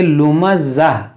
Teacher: यहाँ पर आप जब रुकेंगे तो इस गोलता को हा साकिना से बदलेंगे, यानी इसको पढ़ेंगे लुमज़ा।